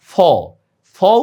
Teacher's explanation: ফ উচ্চারণে দেখো তোমার দাঁতটা কিন্তু নিচের ঠোঁটের সাথে লাগে। ফ এভাবে কিন্তু উচ্চারণ করো না, ঠিক না?